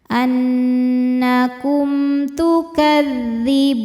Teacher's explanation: Annakum, kum ada izhar syafawi karena mim sukun menghadapi ta, tidak menghadapi mim atau ba, maka mim sukun dibaca dengan jelas.